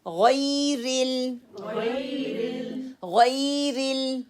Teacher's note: गैन को मोटे हरूफ की अदायगी मोटा है, फुल माउथ है, पुर करके पढ़ना है, तफहीम है, सेकंड लेवल ऑफ तफहीम का है, या ये लीन बन जाएगा, रा की कसरा को क्लियर पढ़ना है।